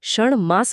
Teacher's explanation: मास मधील म हे अनुनासिक आहे त्यामुळे ट स्वतःला बदलून ण बनवतो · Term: नेझल असिमिलेशन